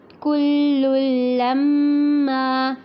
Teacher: کل لما اور میم مشدد پہ غنہ کرنا ہے